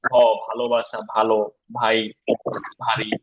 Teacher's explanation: অনেকে বি বলছেন, খেয়াল করেন আমরা যখন ভ বলি বাংলায় তখন দুই ঠোঁট বন্ধ করে বলি